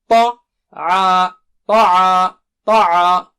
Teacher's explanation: تا بہت موٹا اونچا ہے. طع، طع، طع، تو ایسا ہونٹ گول نہیں کریں گے آپ.